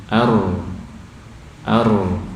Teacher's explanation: Ar tengah-tengah, mengalir tengah-tengah suaranya, tidak tertahan juga tidak mengalir bebas ya. Jadi itu ro bainiyah atau tawassud.